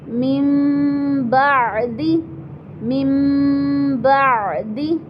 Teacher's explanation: نون ساکن یا تنوین کو میم سے بدل کر غنہ کے ساتھ پڑھیں گے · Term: اقلاب